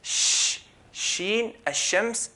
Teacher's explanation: This is pronounced right in the middle of the tongue